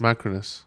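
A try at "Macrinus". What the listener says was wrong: No, there's an I there. Is it Macronus? You think that I makes a Cronus?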